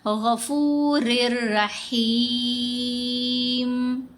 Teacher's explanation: اگر کوئی پڑھے غفور الرحیم، رر کو لمبا کرے تو یہ غلطی ہے، کیونکہ اس کے اوپر غنہ نہیں کرنا، لمبا نہیں کرنا۔ · اب یہاں را کے اوپر ادغام آ رہا ہے تو غفورن تو نہیں پڑھا گیا، رن میں جو نون ہے وہ ختم ہو گئی، سائلنٹ ہو گئی، را کو را سے ملا دیا،